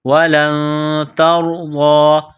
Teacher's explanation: نون ساکن کے بعد تا ہے حروف اخفا ہے تو آواز ناک میں چھپائیں گے غنہ کریں گے اس ناک میں آواز چھپانے کو اخفا کہتے ہیں وَلَن تَرْضَىٰ